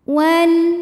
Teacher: lam qamariah karena alif lam menghadapi huruf qamariah yaitu Mim maka lam sukun kita bunyikan dengan jelas atau disebut dengan izhar qamari